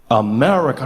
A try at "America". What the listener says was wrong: No, the husk. Bring the husk back. America. America. America.